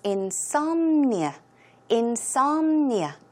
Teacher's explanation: The stress goes on som,